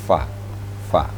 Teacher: Fa itu seperti F, di menghembuskan napas terlebih dahulu, ada anginnya, baru diiringi dengan makharijul huruf, diiringi dengan bacaan atau suara seperti fa, bukan pa ya, tapi fa.